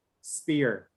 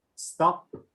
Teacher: if i say spear the paper doesn't move but when i say stop the paper moves with with the breeze so that that is another uh important